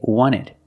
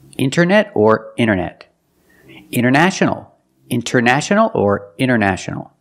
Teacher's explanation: wanted or wanted it's more common to hear Americans say wanted you have NT in the middle the t is silent